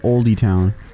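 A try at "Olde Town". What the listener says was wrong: That's just old. Nope, you don't say the E. The E is completely silent. Old town.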